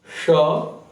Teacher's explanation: इसमें मूर्धा से उच्चारित होता है और गर्म हवा ज्यादा मात्रा में निकलती है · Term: मूर्धन्य श